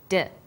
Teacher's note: the same position in the mouth when you articul at D you can feel your tongue against your tooth Ridge